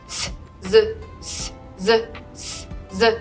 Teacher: Z is a voiced S